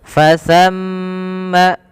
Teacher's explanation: huruf tsa ujung lidahnya ditempelkan dengan gigi seri kita